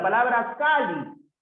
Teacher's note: Por ejemplo, la palabra Cali. Ah, profe, la palabra Cali es una palabra que tiene la mayor fuerza de voz en la penúltima sílaba